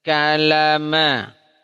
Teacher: Lam tidak keluar lidah. Lidah tidak keluar gigi. Dia bertemu dengan gusi. Ya, sisi lidah depan berikut ujungnya ketemu dengan gusi.